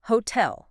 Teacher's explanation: The stress is crucial here. It's on the second syllable.